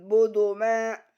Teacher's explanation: Karena harokat tanwin bertemu dengan mim, harokat tanwin dileburkan sehingga mim seolah-olah bertasjid. Membacanya disertai dengung serta membaca mad tabi'i karena mim fathah diikuti alif dibaca panjang 2 harokat. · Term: idgham bi ghunah